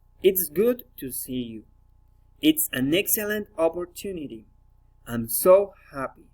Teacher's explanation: Exclamatory sentences, falling intonation.